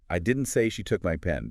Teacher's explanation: Now shift stress to didn't. · You're strongly emphasizing you absolutely did not say that. Stressing didn't is emphatically denying saying those words. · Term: primary stress